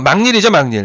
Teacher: 막일이라고 읽지 않고 막닐이 되는 이유는 이 초성에 니은이 하나가 첨가가 먼저 됩니다. 니은 첨가된 순간 비음화의 환경이 되죠?